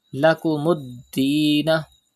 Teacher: Pronounce Dal with emphasis because Dal is a qalqala letter and it is mushaddad in this word.